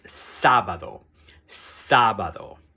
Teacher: So you put extra stress on that first A.